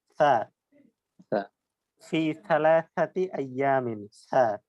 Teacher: জি, থায়ের উচ্চারণটা আমরা জিহ্বার আগা, উপরের দুই দাঁতের আগার সাথে লাগিয়ে জ, দাল এবং থা। এই থা বলার সময় মুখ থেকে বাতাস বের হবে, জিহ্বাটা দাঁতের আগার সাথে লেগে থাকবে এবং একটি বাতাস বের হবে।